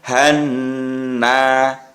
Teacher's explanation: Jadi yang Han itu namanya mendengung dan agak panjang membacanya